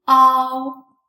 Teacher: first pronounce the simple final a and then gradually switch to the sound o this compound is close to the first syllable in doubt but